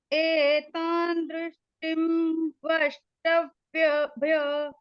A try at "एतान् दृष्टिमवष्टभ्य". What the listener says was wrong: टिम नहीं ना बोलना, टिम बोलोगे तो टिम में तो आएगा हलंत म, टिम। एतान् दृष्टिमवष्टभ्य